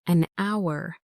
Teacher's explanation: Because the word hour starts with a silent h. So, the first sound is a vowel sound.